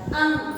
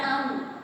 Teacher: अंग बोलते समय देखिए हमारा जो भी उच्चारण हम कर रहे हैं नाक से निकल रहा है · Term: अनुस्वार